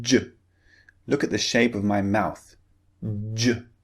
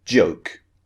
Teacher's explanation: your tongue, first of all, is pushing up and blocking air, okay? Then suddenly your tongue is pulling down and releasing the burst of air.